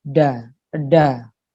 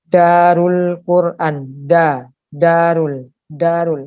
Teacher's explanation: kalau kita rasakan da ini ujung lidah bukan ke pangkal gigi, akan tetapi ke atas, ke langit-langit, ke atas. Ada, itu ke atas, ya.